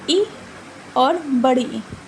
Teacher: जी्हा जो होता है वो हमारे तारू से टच होता है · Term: तालु